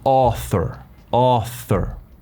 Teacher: Este sonido lo haces metiendo la lengua por los dientes y muerdes un poquitito los dientes, así, pero no tan fuerte, y haces una S.